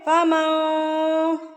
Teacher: فمن فرض، نون ساکن کے بعد اگر حروف اقفا میں سے کوئی حرف آ جائے تو نون ساکن کی آواز کو آپ نے ناک میں چھپا لینا ہے. غنہ میں ہم نے آواز کو ناک میں روک کے رکھا تھا، اقفا میں ہم نے آواز کو ناک میں چھپا کر رکھنا ہے.